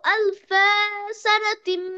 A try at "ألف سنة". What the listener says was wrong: ألف سنة ألفا একটু টান হয়ে যাচ্ছে مقداره ألف سنة مما تعدون